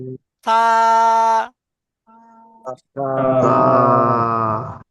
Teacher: জিবের আগা এবং সামনের উপরে দুই দাতের আগার সাথে লাগান।